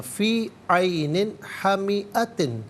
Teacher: इसके बाद हा हरफ़ अलक़ी, तो नून साकिन में जो तनवीन है, नून के नीचे जो तनवीन है, तनवीन को इज़हार के साथ पढ़ा जाएगा, गुन्ना या इख़फ़ा नहीं किया जाएगा